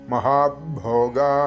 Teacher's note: മഹാഭോഗ ഇവിടെ ഭ ശ്രദ്ധിക്കണം ഭോഗ എന്നൊന്നും ചൊല്ലി പോകരുത് മഹാഭോഗ തൊണ്ട ചേർത്തുകൊണ്ട് മഹാപ്രാണനാണ് ആ അക്ഷരം ഭ സ്ട്രെസ്സ് കൊടുത്തുകൊണ്ട് ഉച്ചരിക്കേണ്ടതാണ്